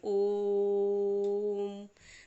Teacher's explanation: इसको हम तिगुनी मात्रा में 3 गुना खींचते हैं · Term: प्लुत स्वर